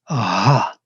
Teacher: With breath, we create a friction, a touch, and it becomes that ha, that last sound in the alphabet. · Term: semi-vowel